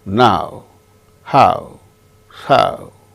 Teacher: au sound starts with strong ah ends with o